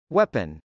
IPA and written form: wˈɛpən (weapon)